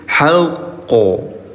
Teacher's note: Qalqalah akbar ada tasdidnya, agak ditahan bunda sedikit, jangan langsung mantul. Haqqo. Jadi jangan haqqo, ada tahan dulu sedikit.